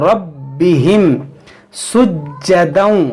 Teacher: देखिए रा को पुर पढ़ेंगे, रब्बिहिम सुज्जदन, ये जीम को खूब जमाव के साथ पढ़ेंगे। जीम हुरूफ़ क़लक़ला भी है और मुशद्दद भी है, तो खूब जमाव के साथ इसे पढ़ेंगे